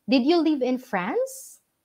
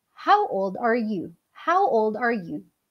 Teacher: When we are asking questions answerable by yes or no, ang intonation po natin dapat ay rising or pataas.